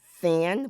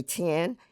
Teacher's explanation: So instead of saying this, they would say dis. Instead of saying thin, would say tin.